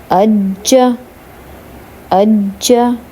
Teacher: جیم حروف قلقلہ ہے، اس کو تھوڑا سا ہلا کر پڑھیں گے